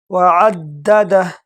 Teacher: دال کو جھٹکے کے ساتھ پڑھیں گے، اس پر تشدید ہے